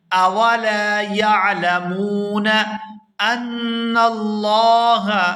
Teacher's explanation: یہاں نون مشدد پر غنہ کریں گے اور آگے لفظ اللہ کے لام کو پورا ادا کریں گے